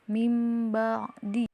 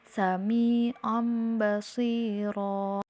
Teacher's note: untuk iqlab yaitu artinya mengubah atau mengganti dan cara membacanya yaitu ubah suara nun mati atau tanwin ketika menghadapi hurufba menjadi suara huruf mim seperti pada contoh nun sukun yang bertemu dengan huruf ba maka